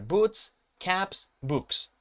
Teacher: Book, que termina en el sonido consonant, voiceless, cuando yo agregue la S, esta S se va a pronunciar con este sonido, ¿ok? Con el sonido de S.